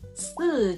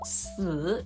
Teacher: The tones of these two words are slightly different. 四 uses a falling tone, while 死 uses a falling rising tone.